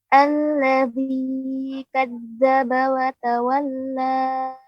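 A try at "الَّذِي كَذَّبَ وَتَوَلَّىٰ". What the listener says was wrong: Ya, untuk alladzi ya Ibu, jangan sampai kepanjangan, cukup ditekan alladzi kadzdzaba wa tawalla.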